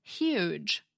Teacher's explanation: The H in huge, though, is made by raising the body of your tongue up close to your palate and forcing air through that constriction. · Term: palatal H's